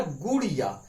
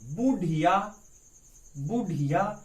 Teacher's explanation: इनके उच्चारण में जीभ ऊपर मूर्धा यानी ऊपर की ओर, ऊपर की सिरे में मूर्धा को स्पर्श करके तुरंत नीचे गिरती है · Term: उत्क्षिप्त व्यंजन